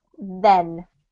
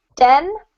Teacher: Every time I say then, you'll see my tongue, right? But den, where a dog lives, is inside your mouth. Your tongue just goes up there.